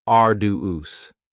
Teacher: arduous has 3 syllables, and the stress is on the first syllable, arduous. Now, you don't hear that D sound that much.